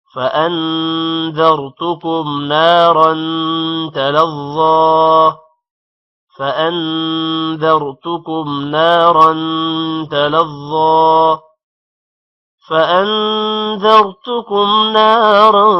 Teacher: فَأَنذَرْتُكُمْ نون پر غنہ ہوگا، را موٹا ہوگا. نارن را پر دو زبر ہے، غنہ ہوگا.